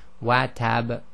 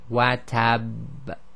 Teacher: It sounds like a difference in the strength, but really it's holding the shadda a little bit.